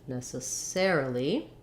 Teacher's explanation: It sounds like necessary. And then for necessarily, the stress changes to the air syllable.